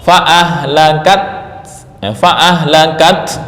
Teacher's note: Kemudian wakaf fa'ahlakat, fa'ahlakat, nah, itu haknya nggak kebaca, namanya membuang hak. Nah, ini yang nggak diperbolehkan.